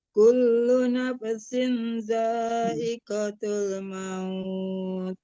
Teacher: Jangan nafasin. Nah, jangan dilepas fa matinya itu jadinya mantul ya